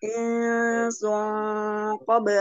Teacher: ikhfa hakiki insun insun ada tanwin menghadapi qaf bacaan ikhfa hakiki qaf adalah huruf isti'la huruf tebal jadi dengungnya ditebalkan